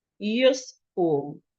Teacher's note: So in this situation, the letter U here has to be reduced. Remember, any vowel in a suffix must be reduced. So it has to be reduced to the schwa sound.